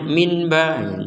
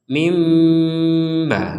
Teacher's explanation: bahwa kita harus membacanya dengan Mim m mim bukan Min lagi bukan Min tapi mim disertai unsur dengung